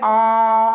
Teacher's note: बड़ा आ का जब आप उच्चारण करेंगे तो पूर्णतः खुला रहेगा मुंह। आ, तो बड़ा आ का जब हम लोग उच्चारण करेंगे तो मुंह इसका पूर्णतः खुला रहेगा। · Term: विवृत स्वर